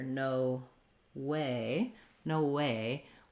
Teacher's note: there's not anything too tricky about pronouncing no way except that we tend to stress both words and the primary stress is on the way